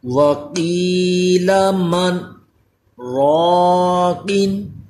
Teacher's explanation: من اتنا کہہ کے پھر میں تھوڑی دیر رکا ہوں، آواز بند کی تھی لیکن سانس جاری رہا تھا، اس کو سکتہ کہتے ہیں۔